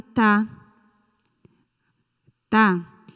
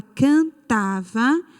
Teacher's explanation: paroxítona porque a sílaba forte é a penúltima sílaba